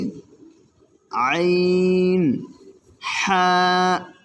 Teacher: দুই নাম্বার মাখরাজ হলকের মধ্যখান হইতে আইন হা এটা একটু চিকন হবে হ্যাঁ আর এটা দেখেন হা ওরকম গম্ভীর